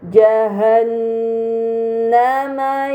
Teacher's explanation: terdapat nun bertasydid, ini dinamakan gunnah, maka harus dibaca dengan gunnah yang dipanjangkan